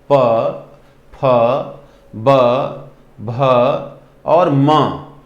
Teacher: पवर्ग के जितने भी अक्षर हैं, प, फ, ब, भ और म, दोनों में हमारे ये पूरे जो हैं पवर्ग श्रेणी के अक्षर, इसमें दोनों ही ओष्ठ एक दूसरे को टच कर रहा है, ओठ के दोनों किनारे एक दूसरे को टच कर रहे हैं